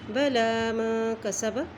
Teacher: لام کے اوپر کھڑی زبر ہے، اس لیے اس کو ہم ایک حرکت لمبا کریں گے۔ بلا ما کسب، اب دیکھیں کاف سین اور با کے اوپر زبر ہیں تینوں کے اوپر، اور جہاں بھی زبر آتی ہے زیر اور پیش وہاں پہ ہم جلدی اسے ادا کرتے ہیں۔